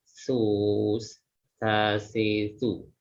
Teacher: Nah, berbeda dengan huruf shin. Nah, za ini dia lebih tipis ya daripada shin karena dia terletak di ujung lidah bertemu dengan gigi seri atas dan bawah